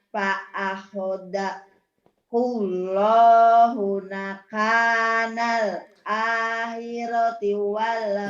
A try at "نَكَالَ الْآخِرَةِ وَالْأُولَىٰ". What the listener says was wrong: Nakalal bukan nakanal. Ini kan lam. Nakalal.